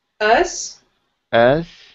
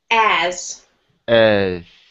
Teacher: when I say as, I open my mouth a little bit more.